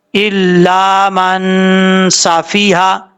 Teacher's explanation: ایک الف کی مقدار غنہ کر کے پڑھیں گے